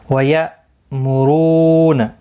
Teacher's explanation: حمزہ ساکن کو جھٹکے کے ساتھ ادا کریں گے